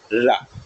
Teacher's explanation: जीभ तेजी से मुड़कर क्या करती है? कंपन करती है। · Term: लुंठित व्यंजन